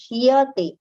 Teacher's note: So in a hurry, we may tend to say vishishyate. It is not shate, it is shyate. So that ya should be heard clearly and completely.